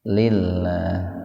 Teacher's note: lafzul jalalah didahului oleh kasrah, jadi dibaca tipis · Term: tarkik